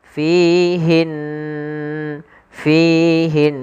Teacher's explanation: berharakat tasydid maka ini kita hukumi dengan bacaan ghunah gunah yaitu kita membaca dengan memasukkan suara ke rongga hidung kita